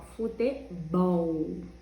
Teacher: Bol é a sílaba mais forte. Então, essa é a última sílaba. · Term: sílaba tônica